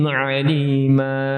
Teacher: alima ini panjang mimnya, alima jangan sampai melebihi 2 harokat ya